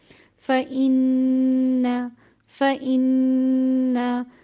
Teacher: پہلے نون پہ غنہ اور دوسرے نون کو زبر کے ساتھ ادا کیا تو اتنی دیر کا اس پہ وقف ہوا یا اتنی دیر اس پہ لگائی گئی کہ جو توسط کے اظہار کے لیے ہے.